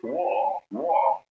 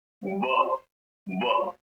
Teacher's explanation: your teeth, the upper teeth, has to press a little bit on your lower lips